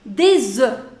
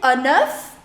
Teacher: So that means when you say it in plural, this F is not pronounced. However, in singular form, it is pronounced.